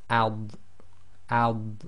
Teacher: the dod is normally pronounced with the left side of the tongue touching the upper left teeth. So even when you do it with sukoon, you should feel the left side of your tongue touching the upper left teeth.